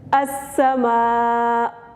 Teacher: السماء وقفا السماء. اینڈ پہ حمزہ کی آواز بھی تھوڑی سی نکالنی ہے.